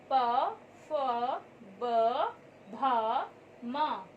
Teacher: इनका उच्चारण करते समय ध्वनि होठों को स्पर्श करती है, इसलिए इसे ओष्ठ वर्ग भी कहा जाता है।